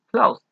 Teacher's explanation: close termina sin vibración en las cuerdas vocales, así que la pronunciación será con T. Closed.